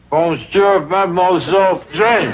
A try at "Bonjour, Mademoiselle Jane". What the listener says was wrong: That's very good, except for the mwah sound. Must be soft. Mwah. Watch my lips closely. Mwah.